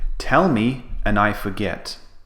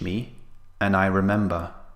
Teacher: we cut the word down to a very short sound we just say n so we cut the D and we make the vowel very very short